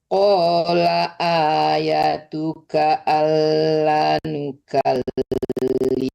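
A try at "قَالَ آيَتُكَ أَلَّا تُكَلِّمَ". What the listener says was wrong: La banyak Allah tukal, bukan nukal tapi tukal. Doang, bukan nukal tapi tukal.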